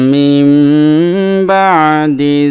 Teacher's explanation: দেখেন নুন সাকিনের পরে বা আসছে, এই জন্য এটা একলাব হবে, অর্থাৎ নুন সাকিনটা আসলে নুন থাকবে না, মিম দ্বারা পরিবর্তন হয়ে যাবে। এই জন্য মিমের উচ্চারণ হবে, এই জায়গায় নুনের জায়গায় মিমের উচ্চারণ হবে।